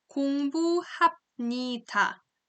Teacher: When the final consonant B sound is followed by n and m, then b sound again is pronounced as m.